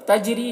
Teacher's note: تجری جیم میں قلقلہ کرنا ہے، را کو باریک پڑھنا ہے، اور یہاں پر یا مدہ ہے تو اسے ایک الف کے برابر کھینچنا بھی ہے.